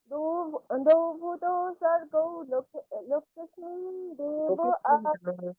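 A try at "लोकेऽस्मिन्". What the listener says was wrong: লোকেস্মিন আপনি টানছেন না, যেগুলো দীর্ঘ উচ্চারণ সেগুলো দীর্ঘ করে বলতে হবে তো।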